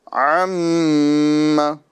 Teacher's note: میم مشدد ہے اور اس پر ہمیں ایک الف کا گنہ کرنا ہے